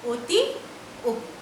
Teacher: অয়ের উচ্চারণ কিছুটা বিকৃত হয়, অনেকটা ওয়ের মতন উচ্চারণ হয়